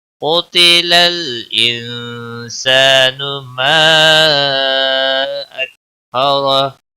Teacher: قتل قاف حروف مستعلیہ میں سے پر پڑا جائے گا